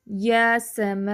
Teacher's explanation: 'یا' کو بھی اس لیے کھینچا جا رہا ہے کہ ایک کھری زبر ہے، تو یہ ڈبل لمبی ہو جائے گی